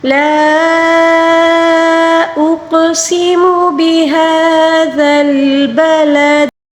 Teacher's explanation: بهذا البلد، دال کو بالکل باریک پڑھیں گے، مطلب نرمی سے پڑھیں گے۔ بلد، دال کے نیچے جو زیر ہے وقف کے دوران اس کو ساکن کے ساتھ پڑھیں گے، اور ساکن کے ساتھ جب بھی پڑھیں گے دال کے اوپر جب بھی ساکن آ جائے اس کو بھی قلقلے کے ساتھ پڑھنا ہوگا، ٹھیک ہے۔